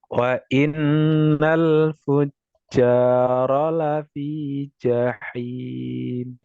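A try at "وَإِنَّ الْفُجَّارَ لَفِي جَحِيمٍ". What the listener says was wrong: Ya, ya nanti bisa dilatih ya. ada PR di huruf jimnya. Ya, monggo, nanti diulang-ulang lagi. Ja. Jaji, jubaju. Jajami harja, jalan-jalan, jajan bajigur. Nah, bukan jajami harja, jalan-jalan, jajan bajigur. Nah, itu kan berbeda.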